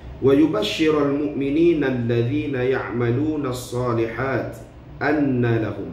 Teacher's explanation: Mim yang bertanda syaddah dan juga nun yang bertanda syaddah. Perlu kita wajib dengung, nama pun wajibul gunnah. Jadi wajib dengung dua harakat di situ.